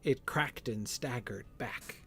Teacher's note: The whole first half of that sentence is iambic trimeter, right? 3 perfect iambic beats.